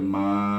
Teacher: dia panjang, ada tanda gelombang, kena baca lebih daripada 2 harakat, iaitu 4 atau 5 harakat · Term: Mad jaiz munfasil